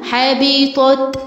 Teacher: حاء تاء هنا نهمس فيها